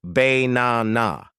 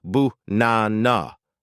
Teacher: They will say bae-na-na. But a native speaker makes the first and last A lazy. They say buh-na-na. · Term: schwa